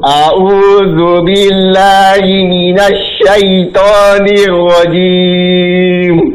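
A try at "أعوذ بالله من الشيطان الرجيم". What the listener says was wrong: Ulangi lagi. Ainnya jelaskan ya.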